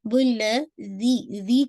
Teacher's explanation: ज़ी को आपने इंशाल्लाह 2 काउंट पढ़ना है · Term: या मदिया